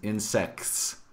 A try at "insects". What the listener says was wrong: Can you say a T?